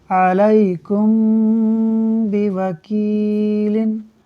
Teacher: میم ساکن کے بعد حرف با ہے، اخفاء شفوی ہوگا، یعنی میم ساکن میں غنہ کریں گے